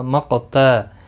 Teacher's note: قاف ساکن پر قلقلہ ہوگا، قاف حروف مستعلیہ بھی ہے، موٹا بھی پڑھا جائے گا